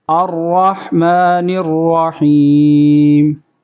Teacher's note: الرحمن الرحیم. اور یہاں پر را کو پر کریں گے